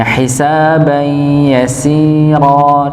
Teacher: Sinnya dipanjangkan 2 harakat minimal.